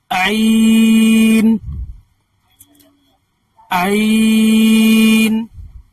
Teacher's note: ये हलक के बीच से निकलता है लेकिन ताकत के साथ निकाल, आइन, पूरी ताकत से निकालना है आपको।